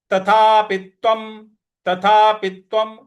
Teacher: जो त्वम का जो त है उस पर हमको आघात देना है